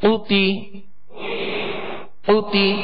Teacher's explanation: قاف کو پر پڑھیں گے، یہ 2 نقطے والا قاف ہے اور حروف مستعلیہ میں سے